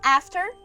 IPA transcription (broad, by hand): æftər